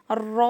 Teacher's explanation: रॉ तो मसूड़ों में लग जाता ऊपर के जो दांत है ना जड़ में में नहीं और थोड़ा सा ऊपर थोड़ा सा हल्का सा तालू